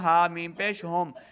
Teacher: ہا کو حلق کے نچلے والے حصے سے ادا کرنا ہے ، میم ساکن کو ظاہر کرنا ہے، یعنی بغیر غنہ کے